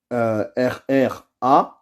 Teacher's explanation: Et le ra, il doit être lu avec la langue et pas avec la gorge. Et on doit rester un peu longtemps. Donc, c'est comme s'il y avait deux R, mais pas avec la gorge. On le prononce avec la langue.